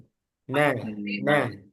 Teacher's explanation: Huruf nun keluar dari ujung lidah bertemu gusi atas dan keluar dari rongga hidung.